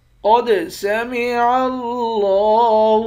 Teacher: قاف کو موٹا پڑھیں گے، قاف موٹے حرف میں سے ہے، دال پر قلقلہ کریں گے۔ لفظ اللہ کے لام کے اوپر کھڑا زبر ہے، لفظ اللہ کے لام کو کھینچ کر پڑھیں گے، لفظ اللہ کے لام کو بھی موٹا پڑھیں گے۔